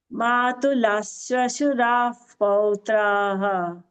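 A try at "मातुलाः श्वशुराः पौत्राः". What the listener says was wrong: Matula Shwashura Sha. You are telling Sa, Saraswati Sa. It's not Sa. Shwashura Sha. Shankara Sha. Matula Shwashura Pautraha.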